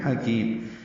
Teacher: حکیم ہا وسط حلق سے ادا کریں گے، کاف باریک ہے. کی یا مدہ ہے، 2 حرکات لمبا کریں گے. اور میم کے نیچے تنوین ہے، 2 زیریں، اس کے بعد ہا آنے کی وجہ سے پھر اظہار ہے.